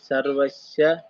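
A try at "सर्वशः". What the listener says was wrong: ಸರ್ವಶಹ ಅದೊಂದು ಶಹ ಆಕಾರ ಹೋಯಿತು ಬಾಕಿ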